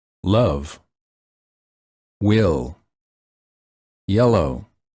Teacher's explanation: spelled with a letter L love will yellow for this sound the tip of the tongue touches the upper gum Ridge and the tongue is tense the air comes out on the sides of the tongue and at the corners of the mouth